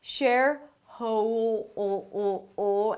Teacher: the dark L blends in with the 'oh' as in 'go'